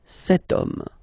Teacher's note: But then it starts with H, as in French, H is not pronounced, so the first sound that we hear is O